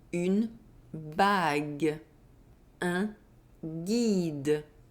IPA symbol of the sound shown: g